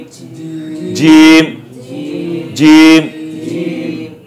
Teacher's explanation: জিব্বার মাঝখান উপরে তালুর সঙ্গে লাগায় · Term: জিমের মাখরাজ